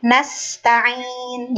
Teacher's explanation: Nasta'in, karena huruf sin itu sedikit ya Bu ya. Sifat huruf sin itu ada nafas yang keluar atau alhamas. Nasta'in, jadi nggak boleh tergesa-gesa.